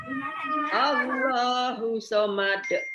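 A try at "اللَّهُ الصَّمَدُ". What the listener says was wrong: Ya, hus somad ditasdidkan. Hus somad. Allahus somad. Allahnya coba diayunkan. Allahus somad. Berarti kesalahan yang sering jadi berarti di situ, hati-hati ya. Allahus somad.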